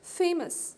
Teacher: FA is the separate syllable, and MOUS is the second one, but the stress is on the first